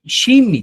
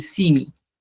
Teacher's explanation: Eso va a depender de la variedad, porque, por ejemplo, en el quechua norteño, algunos dicen, por ejemplo, shimi te van a decir, en vez de decir simi